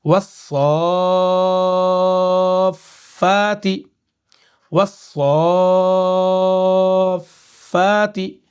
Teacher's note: تشدید ہے یہاں پر، اس سے پہلے حرف مدہ آ رہا ہے، تو اب کیا کریں گے، کھینچیں گے 5 الف کے برابر